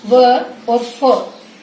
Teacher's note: नीचे वाला होठ है वो ऊपर वाले दांतों से स्पर्श करता है, वो होते हैं दंतोष्ठ्य व्यंजन